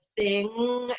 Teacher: And if you didn't feel all that buzzing, your nose running, you're tickling, then it's got to be more like the word if you went sing and held that NG at the end of the word. You said sing and that NG is held, you'll feel it in your nasal cavity. The whole purpose is that the NG, like I said before, can't be sung in your throat.